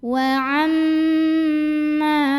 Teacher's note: Cara membunyikannya dengung, bunyi M-nya tahan kurang lebih 2 harokat sampai ada getaran halus ke hidung. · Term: gunnah musyaddadah